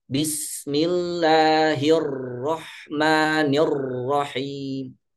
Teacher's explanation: Nah, ini disebabkan karena menekan, ya terlalu ditekan sehingga celah kecil yang harusnya untuk keluarnya huruf ro tidak terbentuk sehingga menyebabkan huruf tersebut menjadi bergetar berlebihan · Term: getarannya berlebihan